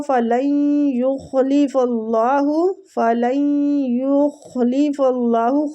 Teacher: خا مستعلیہ حروف ہے، پور پڑھیں گے ، فاللہ، اللہ کی لام کو بھی پور پڑھیں گے، عَهْدَهُ،